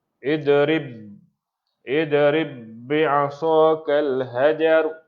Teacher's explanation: Wajib, ba tu bertemu dengan ba tu terus. Masuk terus. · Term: idgham mislain saghir